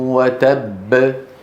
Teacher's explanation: وتب هذه الكلمة بالذات فيها باءين، باء مدغمة وباء مقلقلة.